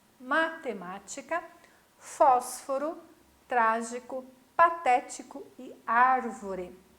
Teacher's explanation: a antepenúltima sílaba de cada uma é a sílaba tônica é a sílaba forte